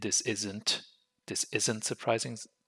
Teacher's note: do you hear the T and this isn't this isn't surprising no you don't hear it